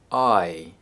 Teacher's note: it transitions between the A and I sounds. They are linked with the Y sound. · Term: the I sound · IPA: /aɪ/